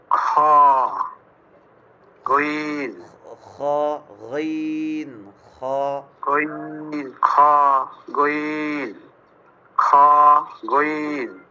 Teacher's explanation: আরেকটু 3 চিকন নম্বর মানে আরেকটু চিকন করে উচ্চারণটা হবে একদম মানে চিকন করে মনে হয় মানে এরকম ভাবে উচ্চারণটা আসবে মনে হবে যে মানে গলা চিপ দিয়ে রাখলে যেরকম একটা হয় এরকম জি জি আইন জি। 3 নম্বর মাখরাজ হলকের শেষ ভাগ হইতে উচ্চারিত হয়